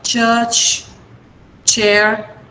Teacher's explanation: The flow of air is stopped as in a plosive, but it is released slowly. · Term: affricates